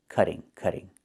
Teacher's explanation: in America, we change the T to a fast D when it's between vowels, like this.